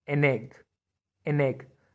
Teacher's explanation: put n in front of it an egg listen to it it sounds like the same word an egg an egg they are connected with each other